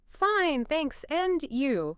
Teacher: Listen to that rising intonation on and you.